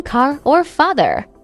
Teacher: In this accent, the R sound is pronounced clearly at the end of words, like in car or father. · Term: general American accent